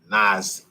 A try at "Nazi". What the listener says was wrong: Can't even pronounce Nazi. Nazi. Sound like you got a lisp, fuck boy.